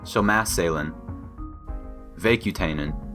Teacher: The particle n, a syllabic n sound